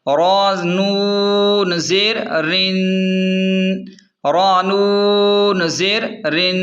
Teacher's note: را کو نون سے ملا دیں، نون پر تشدید ہے، یہاں تھوڑی دیر آواز ناک میں روک کر غنہ کریں، جیسے وَمِن شَرٍ اس طرح.